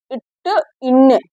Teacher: நாவின் நுனி அன்னத்தின் நுனிகள் பொருந்துவதால் பிறப்பது